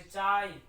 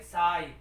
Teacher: और कहाँ की विशेषता है, दक्षिणी पश्चिमी जो बोली है राजस्थान की, वहां पर तालव्य ध्वनियों च छ ज को दंते स में उच्चारित किया जाता है